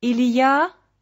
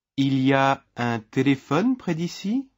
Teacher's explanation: If you want to use il y a? to ask a question, you need to change the intonation. You do that by lifting your voice at the end. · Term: rising intonation